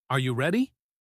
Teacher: when you ask a yes no question your voice typically goes up at the end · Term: Rising tone